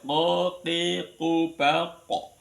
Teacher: Qo itu menekan di ee di anak lidah ya.